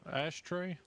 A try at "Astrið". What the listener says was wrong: it's not SH. It's Astrид, but you don't pronounce the D at the end.